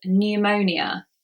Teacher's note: There we just say the N sound and we forget the P.